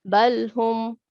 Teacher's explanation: Okay, you pronounce this lam with a jerk, and we shouldn't make a jerk while pronouncing lam letter, because lam is not the letter of kalkala or jerking letter. Okay, so it should be recited normally.